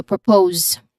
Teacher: It's quick and stressed. The stress is on the second syllable of propose. So, propose.